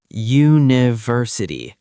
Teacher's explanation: It sounds like it starts with ya, and ya is a consonant sound.